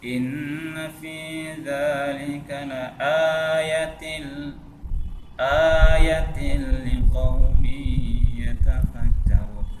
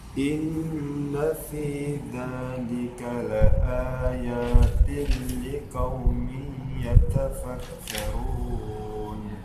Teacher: Masa dipendek ya-nya. Seharusnya kan panjang di situ. Sama-sama panjang.